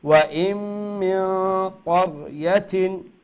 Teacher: মিন নুন সাকিন পরে কাফ আসছে তো আমরা ইখফা করব